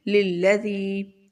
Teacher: یا ساکن سے پہلے زیر ہے تو اس کو بھی ہم تھوڑا لمبا کریں گے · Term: یا مدہ